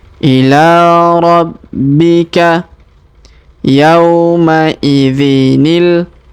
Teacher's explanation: Huruf B kita tahan dan tekan karena terdapat tanda tasdid.